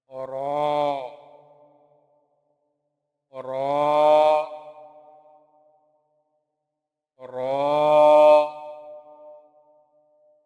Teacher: یہ حرف زبان کی نوک کو اوپر کے نرم حصے سے ہلکا سا لگا کر ادا ہوتا ہے۔